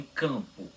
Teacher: ele deixa que a vogal fique com som nasal